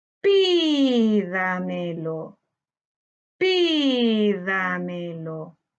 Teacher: su sílaba tónica está en la anterior a la antepenúltima sílaba.